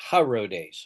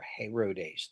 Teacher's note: brings in that H sound because they don't have an H in Greek